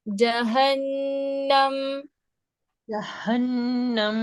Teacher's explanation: ہا بہت زیادہ سینے کی سائڈ سے نہیں, آپ نے حلق کی سائڈ سے نکالنا ہے. جہنم, جہنم یہ بھاری ہو رہا ہے ہا, ہلکا کریں. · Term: حانی ہا